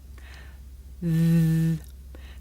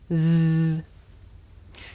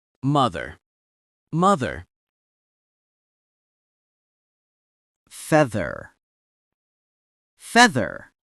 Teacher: The sound comes from between my tongue and my top teeth. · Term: voiced consonant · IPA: /ð/